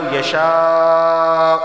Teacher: من لو یشاء اللہ یا مد متصل ہوگا کیونکہ ایک ہی لفظ کے اندر الف مدہ اور حمزہ دونوں جمع ہو گئے ہیں تو اسے لازمی 4 الف کے برابر کھینچ کر پڑھنا ہے